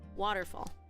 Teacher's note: all three vowels actually have a stress in each of them. So it's a little bit, it's elongated a little bit longer.